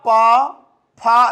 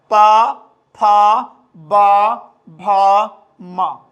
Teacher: तब हम देखेंगे अपने ओठों की सहायता से पर्यायवाची में रत्नच्छद ओष्ठ होता है, रत्नच्छद होता है, तब समझिए कि बोलेंगे आप पा फा, देख लें ओठ आपका स्पर्श कर रहा है